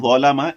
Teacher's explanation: ظلم، ظلم، آپ یہ 3 حروف دیکھیں. ظلم، اس میں صرف ظ ایک ایسا حرف ہے جس میں صفت استعلا پائی جا رہی ہے. اسی وجہ سے میں اس کو ظلم نہیں پڑھ رہا ہوں، ظلم نہیں، ظلم.